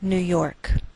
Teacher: we treat New York as one word and we place more stress on the second part York